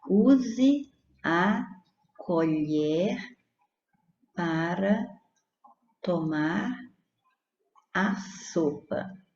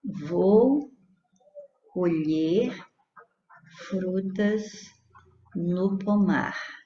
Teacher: você olha para as palavras elas tem a mesma grafia mas a primeira tem o timbre aberto no e e a segunda tem o timbre fechado no e